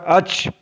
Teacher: अलिफ चा ज़बर अच तो मालूम चलेगा यहाँ भी ज़बान के दरमियान और तालु के दरमियान से अदा हो रहा है। Middle of the tongue and middle of the पैलेट से चा भी अदा होता है